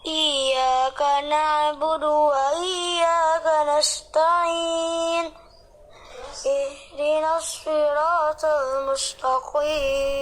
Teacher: ini tipenya suaranya serak ya, tapi lembut gitu. Serak dan lembut ya.